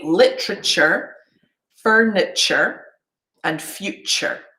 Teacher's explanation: we very often use the schwa when we're pronouncing a suffix